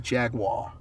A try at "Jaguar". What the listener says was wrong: Jaguar. Where is the W in Jaguar? Jaguar.